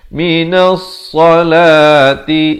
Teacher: Jadi di sini alif lam syamsiah, lamnya tidak dibunyikan.